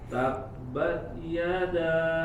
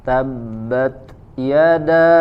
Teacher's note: Tabbat, ada hams keluar anginnya.